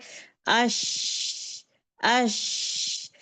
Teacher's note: आवाज पूरे मुंह में फैल जाएगी। इसको तशफी कहते हैं। पूरे मुंह में फैल जाएगी।